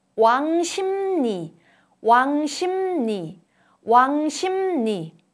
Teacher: 부, a plosive, becomes 무 sound. 르 becomes 느 sound, a nasal sound. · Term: nasalization